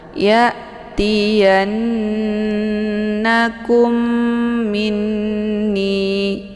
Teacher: ya-nya ditekan kemudian ditahan suaranya 2 harokat sambil didengungkan, dileburkan suara ke dalam huruf na. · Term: ghunnah musyaddadah